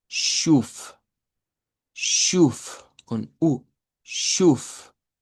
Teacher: lo que necesitamos nosotros es pronunciar una sh más una u larga. Y esta esta palabra nos quedaría como shuf.